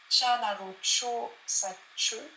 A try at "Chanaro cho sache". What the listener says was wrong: Alors, idéalement, de la même manière qu'ici, essaye de mettre un poil plus d'expiration quand même. Chanaro cho sache.